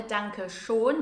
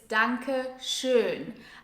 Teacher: Dankeschön is pronounced with the German Ö sound, so it's not a Danke schon